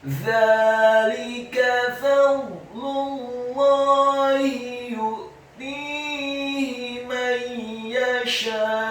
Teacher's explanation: huruf za-nya dibaca tipis, tarqiq, lidahnya agak keluar sedikit, fathah dua harokat karena harokatnya tegak.